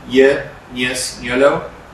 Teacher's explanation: Palatal, we have two articulators working. The active one is tongue front, and the passive one is the hard palate